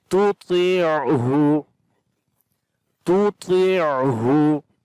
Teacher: Hu from the bottom of the throat